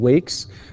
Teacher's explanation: the s sound is similar to the k sound in terms of being voiceless